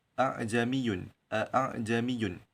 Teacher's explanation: Huruf hamzah itu di antara hamzah dan alif dan dengan maksud meringankan hamzah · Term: tashil